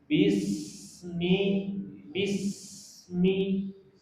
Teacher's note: Huruf sin ya sa itu termasuk hames, udara mengalir. Maka gak boleh berhenti kalau baca sin mati.